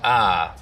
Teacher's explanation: some African-American speakers in southern Appalachians smooth out the eye diphthong the price vowel in some words